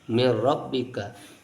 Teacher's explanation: Mir rabbika, idgham saja, nun dilebur kepada huruf ro tetapi tanpa dengung, maka disebut idgham bila gunnah, idgham tanpa gunnah.